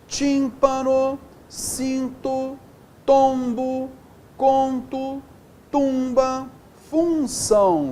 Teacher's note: essas letras diacríticas servem apenas para nasalizar a vogal anterior